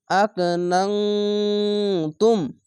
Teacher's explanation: ইকফা গুন্না বাংলা অনস্কার মত হবে